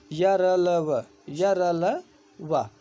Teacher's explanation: ये सघोष अल्पप्राण होते हैं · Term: अंतस्थ व्यंजन